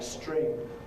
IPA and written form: strɪŋ (string)